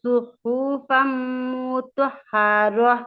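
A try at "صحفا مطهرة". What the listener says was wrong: মুতাহহারা এরকম না, মুতাহহারা। মু টান হবে না, মুতাহহারা। সুহুফাম এরকম না, সুহুফাম। হরকতের উচ্চারণ তাড়াতাড়ি পড়তে হয়। সুহুফাম মুতাহহারা। মু টান হবে না, মুতাহহারা।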